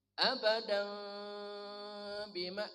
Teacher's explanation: Menurut imam-imam kita yang diutamakan adalah suara tanwinnya dibaca samar. Abadan bima kedua mulut dibuka sedik.